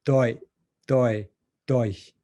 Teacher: first with a glottal stop ending, then with a voiced ending, then with a devoiced ending. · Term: minimal triplet